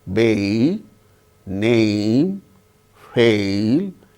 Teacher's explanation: when we utter the word bay, name, fail, it starts with the sound A, ends with the sound E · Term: diphthong